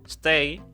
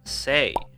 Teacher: the reduction of a consonant cluster, two consonants next to one another, to one consonant. If you have something like stay, it will be pronounced as say. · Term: cluster reduction